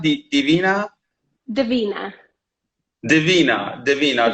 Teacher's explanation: the stress is only actually second syllable